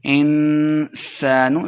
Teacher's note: انسان، سین پہ سیٹی کی آواز آئے گی